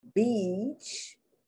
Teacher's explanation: They pronounce it not like the long E, beach. They pronounce it like the short I.